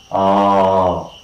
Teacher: next one is the long back open sound